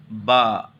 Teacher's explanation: دونوں سامنے کی دونوں ہونٹوں کو ملا کر کے ادا کرنا ہوتا ہے